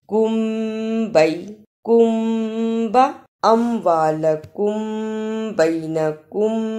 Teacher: آیا ہے، اسے اخفاء شفوی کہتے ہیں۔ ادا کرنے کا طریقہ، میم ساکن کی آواز کو تھوڑی دیر منہ میں چھپا کر غنہ کرنا ہے